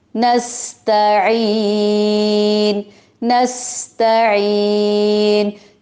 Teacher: ता को बारीक पढ़ेंगे, तो की तरह मोटा नहीं पढ़ेंगे